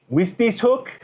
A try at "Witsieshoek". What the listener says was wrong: It's a V. Yes, W pronounced as a V.